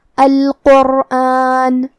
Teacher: ہم حرف القاف کو اور حرف الرا کو دونوں کو بھاری آواز میں پڑھیں گے